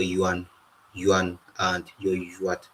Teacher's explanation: the second variant, the yo sound, or the labialized form of the ya sound